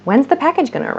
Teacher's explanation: these sounds also reduce so where are becomes wearer at least in my american english accent it becomes wearer where are you gonna go where are you